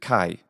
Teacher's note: pronounced in the ancient and classical way as a velar unvoiced plosive followed by a bit of aspiration so it's the combination of gah + ha ha ha which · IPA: kʰ